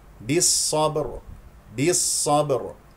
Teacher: سوف نقف على راء ساكنه تكون مفخمه لانها ساكنه قبلها ساكن قبلها مفتوح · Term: راء ساكنة